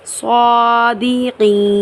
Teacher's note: صادقین یہاں پر گول دائرہ یعنی وقف تام کی علامت ہے، تو اس کو ہم اس طریقے سے پڑھیں گے، صادقین۔ نون کو ہم ساکن کرتے ہوئے کھینچ کر یہاں پر وقف کریں گے